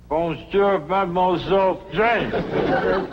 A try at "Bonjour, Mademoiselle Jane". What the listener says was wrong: Except for the mwah. Must be soft. Mwah. Watch my lips closely. Mwah.